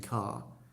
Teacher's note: in England, you don't really pronounce the R